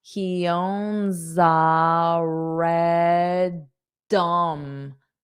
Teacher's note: So this S, when I connect it to A, it'll sound like za.